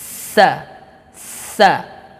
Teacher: Huruf sa ini adalah dhahru tarafil lisani wa atrafus sanayal ulya. Jadi ujung lidah menyentuh kepada ujung gigi seri atas kita.